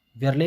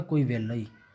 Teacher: ਰਾਰੇ ਲੱਲੇ ਦਾ ਵਿਅੰਜਨ ਗੁੱਛਾ ਬਣ ਜਾਂਦਾ ਹੈ ਲੱਲੇ ਦੇ ਵਿੱਚ। ਜਿਵੇਂ ਵਿਰਲੇ ਨੂੰ ਬੋਲਿਆ ਜਾਵੇਗਾ ਕੋਈ ਵੇਲਾ ਹੀ।